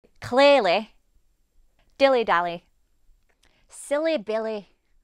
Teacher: When a word ends with a Y, in a Yorkshire accent, you'll hear this as a short i sound.